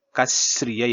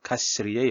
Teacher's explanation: 3వ పాదం 4వ పాదం కూడా మీరు కలిపి చదవాలి అంటే జాట జూటకః శ్రియ అయినప్పుడు పక్కన శికారం వచ్చింది కాబట్టి ఈ విసర్గ సంధి ఏమవుతుంది అంటే ఇది కూడా శికారం అయిపోతుంది అన్నమాట. ఈ విసర్గ కాస్త సో కహ కాస్త కష్ అవుతుంది.